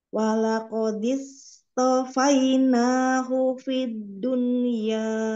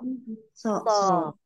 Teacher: Huruf so, itbak dan isti'lah. Naikkan pangkal lidah, lalu sisi lidahnya tempelkan ke gigi raham atas.